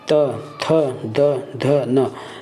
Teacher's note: हमारा जीभ दांत में कहीं न कहीं स्पष्ट हो, कहीं न कहीं जाके स्पर्श कर रहा है, दबाव डाल रहा है दांत में, उसको बोलते हैं दंत।